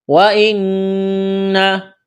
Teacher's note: نون مشدد ہے، نون کے اوپر تشدید ہے، یہاں غنہ کریں گے، آواز ناک میں چھپائیں گے